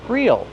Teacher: Use a long E sound. Real. Then the dark L.